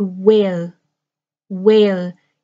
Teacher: When I start with the word where, where, you have the sound of air, air, like air that I breathe, a big air, where. My lips start smaller for the w, w, where, but my mouth goes very wide by the end, where.